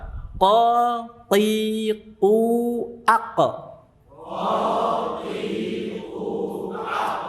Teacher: Jadi ketika mengucapkan huruf tersebut, pangkal lidah naik ke langit-langit mulut. Ya, langit-langit mulut sehingga suara terdengar tebal. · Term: isti'la